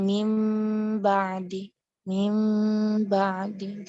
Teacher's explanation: Dirapatkan berarti. Jadi cara melafazkan mim yang tersembunyi dengan menutup bibir dan menahan mim dengan tempo panjang gunnah. Kemudian membukanya dengan huruf ba.